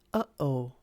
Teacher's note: this is when you suddenly cut off your voice in the back of your throat like in the sound uh-oh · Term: glottal stop